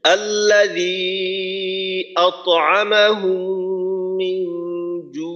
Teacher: আতআমাহুম মিন জু', আর শেষে আইনটার উচ্চারণটা একটু চালু রেখে করা, আওয়াজটা যেন বন্ধ হয়ে না যায়। আর আইনের উচ্চারণটা 3 আলিফ টানার পর টানের শেষে আসবে।